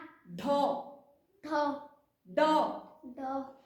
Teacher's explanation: इनके उच्चारण से जीभ झटके से टकरा कर नीचे आती है तालू से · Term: नुक्ता व्यंजन